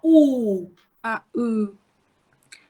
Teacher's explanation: No firm contact being made between the tongue and the upper molars. The lips are closely but loosely rounded. · This vowel is pronounced with a part of the tongue nearer to the center than to the back, just raised up just above the half-closed position. It has, therefore, a symmetrical back relationship with the front vowel, E.